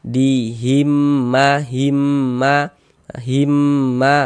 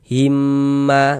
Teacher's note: mim sukunnya ini melebur masuk ke huruf mim yang ada tanda bacanya ini gitu. Jadi dibacanya cuma satu himma begitu. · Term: idgham mimi